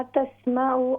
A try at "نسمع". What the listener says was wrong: ہاں جی، یہ ہوگا نسمع نون، can you speak Urdu or English? So the word is nasma'u. There's a N for November.